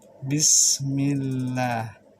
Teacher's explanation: karena sin tipis, lidah lurus, jangan terlalu ke atas